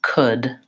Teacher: Could is a word, an LD word where we don't actually say the L. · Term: no L